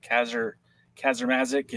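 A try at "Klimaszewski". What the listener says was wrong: no R's. I don't know where you're getting an R.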